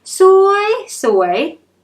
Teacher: change the first word to a high tone